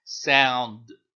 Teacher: it's not sound do it's not sound that it's just sound the D just becomes a silent letter D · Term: sukoon